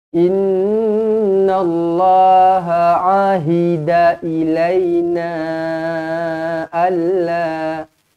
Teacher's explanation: Inna nun yang bertanda sabdu wajibul gunnah.